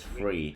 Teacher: He says instead of three, he says free.